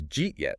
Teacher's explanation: The D at the end of did and the Y at the start of you sort of collide, it becomes Jeet yet? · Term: articulatory economy